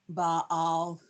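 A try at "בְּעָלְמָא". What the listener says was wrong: Not ba. B. B.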